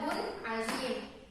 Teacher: Tanwin juga dibaca jelas tanpa ada dengung. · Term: hukum izhar